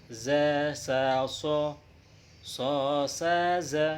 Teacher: ketika kita melafalkan huruf sofir ini kita seakan-akan bersiul